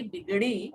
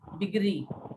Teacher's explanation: ड़ की जगह र का प्रयोग करते हैं, ये क्षेत्रीयता का प्रभाव होता है